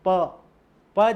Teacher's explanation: हमारे जो औष्ठ है इनके द्वारा ही इसका उच्चारण होता है। जैसे आप देखो, बोलो प जैसे ही बोलोगे तो आपके जो जिह्वा है वो वहां पर प ध्वनि एक आती है अलग से, तो इसको ओष्ठ स्थान बताया गया।